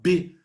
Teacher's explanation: B é uma consoante bilabial explosiva